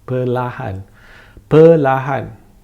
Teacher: The R is still there, but it's barely noticeable.